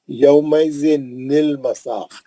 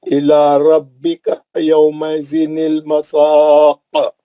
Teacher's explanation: تنوین کے بریکٹ کو کھول دیا، کھول کے نون نکالا تو دو حرف ساکن ہو گئے، نون بھی ساکن لام بھی ساکن، تو پہلے ساکن کو زیر دے دیا انہوں نے۔ رول کیا ہے، پہلے ساکن کو زیر دے کے پڑھیں، پہلا ساکن نون تھا اس کو زیر دے کے چھاپ دیا۔ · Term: نون خطنی